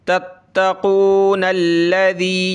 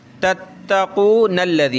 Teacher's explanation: ہم ملا کے پڑھیں تو یہ تشدید دی ہوئی انہوں نے، نون کو ہم لام کے ساتھ ملا کر پڑھ سکتے ہیں